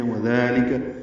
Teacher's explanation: دال نرمی سے پڑھا جائے گا، لام کاف باریک ہے